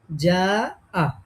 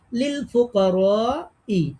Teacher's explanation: তো এখন এই যেহেতু একই শব্দের মধ্যে হামজা চলে আসছে এক আলিফ মাদের পরে, এই যে জবরের পরে আলিফ, তার মানে এটা এক আলিফ মাদ। তারপরে একই শব্দের মধ্যে হামজা আসার কারণে এক আলিফ মাদটা আর এক আলিফ থাকে না, তখন এটা ৪ আলিফে কনভার্ট হয়ে যায়, তখন ৪ আলিফ টেনে পড়তে হয়। এখন আমরা এটাকে ৪ আলিফ টানবো। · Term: মাদ্দে মুত্তাসিল